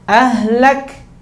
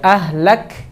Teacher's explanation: Sifatnya hamas. Udaranya dia mengalir, tidak tertahan.